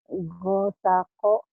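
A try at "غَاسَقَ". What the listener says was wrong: Gonya panjang. kita baru belajar matobi ini patah dengan alif panjang ya. Ini panjang, ini panjang, panjang.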